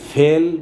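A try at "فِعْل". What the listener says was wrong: উচ্চারণটা কি ফেল নাকি ফিল? ফিল, ফিল।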